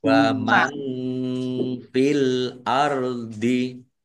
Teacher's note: nun sukun bertemu dengan huruf fa bacaan ikhfa dibaca samar-samar